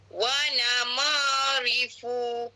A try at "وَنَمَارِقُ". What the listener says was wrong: Masih huruf qaf tu. Bukan huruf fa tu, huruf qaf.